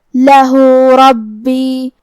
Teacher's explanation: کلمت لہو، ہا پہ الٹا پیش ہے تو یہاں حکم ہے مد صلہ صغرا، ہمیں اپنی آواز 2 مد کے برابر لمبی کرنا ہے · را پہ زبر ہے تو ہمیں را کو موٹی آواز میں پڑھنا ہے